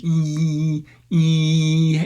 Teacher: you're pushing your tongue up into a high front position. And if you go any further with it, if you make it even like higher or fronter, you'll start to make a fricative. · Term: cardinal vowel number 1